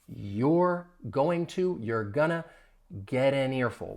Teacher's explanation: that final T in get, you're going to hear me pronounce it as a flat T